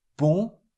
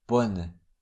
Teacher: Bon with a nasal on, bonne without a nasal sound.